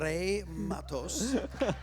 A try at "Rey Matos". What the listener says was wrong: you have to roll the R.